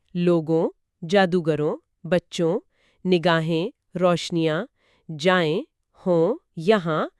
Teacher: یہ ایک غنائی آواز ہے، مطلب ناک سے ادا ہوتی ہے · ان سب کے آخر میں یہی آں ہے اور آواز ناک سے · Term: نون غنہ